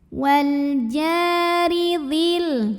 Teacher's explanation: Wal jari. Huruf ra dibunyikan secara tarqiq sebab barisnya di bawah kasrah. Maka bacanya tipis.